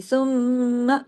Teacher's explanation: मीम मुशद्दद है, गुन्ना हुआ बड़ा, लेकिन माँ की आवाज को गुन्ना ही करना है, आ की आवाज नहीं देनी। · मुंह को बंद करें, गुन्ना करें, सुम्मा, नाक से आवाज निकली